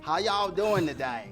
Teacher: it has a much more of a southern drawl elongating those vowels a little bit